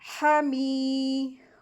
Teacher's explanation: میم کے ساتھ یا مدیہ کا رول ہو رہا ہے، یا ساکن سے پہلے زیر آئی ہے تو یا مدیہ ہوگی تو 2 حرکات کھینچیں گے